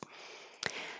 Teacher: You can say you or ya because it's not stressed.